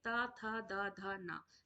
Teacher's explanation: ता था दा धा ना ये जो हमारे वर्ण होते हैं वो दंत से उच्चारित होते हैं